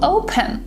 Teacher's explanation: open it's a verb but we have the stress on the first syllable